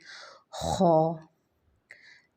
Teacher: اس خو کو پڑھتے ہوئے خراش والی آواز آنی چاہیے